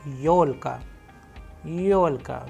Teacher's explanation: you can see the stress is on yo because it is also a vowel